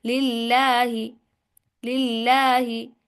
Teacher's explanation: खड़ी जबर को एक अलिफ के बराबर जो है ना, एक एक जबर के बराबर लंबा करेंगे।